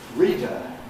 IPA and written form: ˈriːdə (reader)